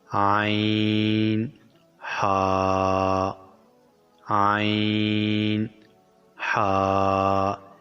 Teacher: حلق کے درمیان والے حصے سے ادا ہوتے ہیں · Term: حلقی مخرج